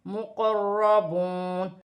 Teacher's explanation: حمزہ کے نیچے زیر کی حرکت ہے, کاف کو لام کے ساتھ ملا کر پڑھا جائے گا. مقربون, را مشدد ہے, زبر بھی ہے, را موٹی پڑھی جائے گی. مقربون, واو ساکن سے پہلے پیش ہے تو واو مدہ بنے گی, اسے ایک الف کی مقدار کھینچ کر پڑھا جائے گا.